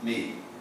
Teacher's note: Quando você pega o I, o E tem valor maior do que o I. Então o E é a vogal e o I é uma semivogal. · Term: ditongo decrescente